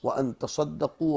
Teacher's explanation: تتصدقوا تھا تا کا صاد میں قرب مخرج کی وجہ سے ادغام کر دیا گیا